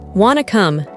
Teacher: we even dropped the do you. We just said wanna come.